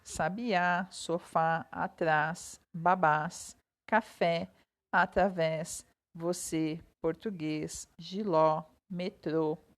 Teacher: classificadas como oxítonas pois a sílaba tônica é a última